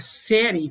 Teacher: eu tenho semivogal mais vogal, há uma evolução da semivogal para vogal, uma crescente aí na pronúncia